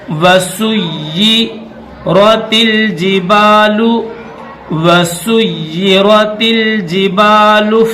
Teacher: یا کے اوپر تشدید ہے اور نیچے زیر ہے تو اس یا کو سختی کے ساتھ پڑھیں گے